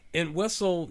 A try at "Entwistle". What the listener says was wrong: Why are you putting the emphasis on the wrong syllable? And Whistle. Everyone else I've ever heard say his name says Entwistle. You're Entwistle.